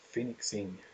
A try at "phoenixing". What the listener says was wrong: Phoenixing. It sounded like you said finxing.